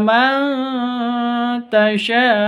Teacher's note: nun sukun bertemu dengan ta samar didengungkan ikhfa Hakiki